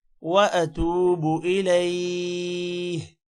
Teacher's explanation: تا کے بعد واو ہے، لمبا ہوگا اور با کو لمبا نہیں کرنا